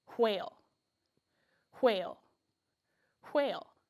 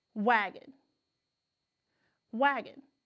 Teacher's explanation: when we say the word quail we feel a stronger burst of air against our fingers when we say the word wagon it's not as strong and